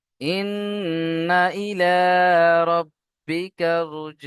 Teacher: গুন্না করতে হবে কারণ নুনের উপরে তাশদিদ অজিব গুন্না